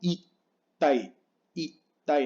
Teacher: No es ikai, sino ikai. Tiene una pausa porque es doble K.